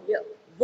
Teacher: व म्हणताना या दोन्हीचा उपयोग केला जातो दात आणि ओठ